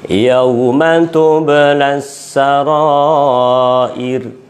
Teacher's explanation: rohnya tipis, jatuh setelah kasrah